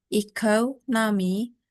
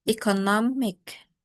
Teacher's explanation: And then economic, the stress shifts from the second syllable, economy, to the third syllable, economic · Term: stress-shifting suffixes